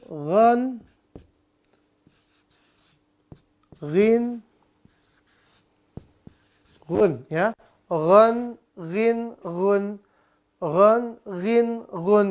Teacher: pastikan sifatnya betul di mana sifatnya tebal dan napasnya ditahan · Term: Huruf tebal